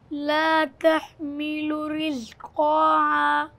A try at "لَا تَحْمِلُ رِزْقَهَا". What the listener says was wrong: قاف کے بعد الف نہیں ہے آپ پڑھیے بیٹا پھر سے